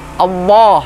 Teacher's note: selanjutnya lamjalalah ketika diawali Fatah atau diawali bom ah maka Hai dibaca tebal diangkat-angkat lidahnya